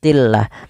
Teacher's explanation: di sini lamnya dibaca dengan tipis tillah bukanah karena dia didahulu lafal Allah didahulu dengan huruf kasrah